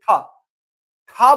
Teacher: जब ठ बोल रहे हैं तो वायु ध्वनियां बहुत तेजी से निकल रही है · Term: मूर्धन महाप्राण अघोष व्यंजन